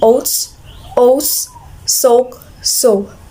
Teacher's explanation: mid back tense round vowel